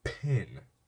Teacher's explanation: When you say pin, there's a short breath after the P sound. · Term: aspiration